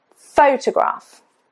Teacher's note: Stress is on the first syllable. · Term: syllable stress